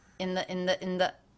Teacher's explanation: even though in the is two words, it was probably faster than the single word West.